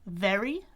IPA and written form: vɛri (very)